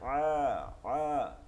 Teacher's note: আইনকে আ পড়া যাবে না, আ চাপ দিয়ে পড়তে হবে, আ আ।